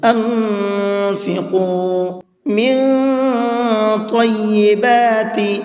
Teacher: طا کو منہ بھر کے پڑھیں گے۔ طیبات ما کسبتم، اور با کے اندر قلقلہ کریں گے، یعنی کہ ہلکا سا آواز کو ڈبل کر کے پڑھیں گے۔